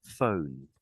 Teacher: I lift my tongue at the front to get the front to get the N sound. I'm touching my tongue.